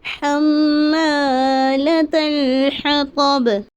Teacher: با پر جو زیر ہے اسے ہم ساکن کر دیے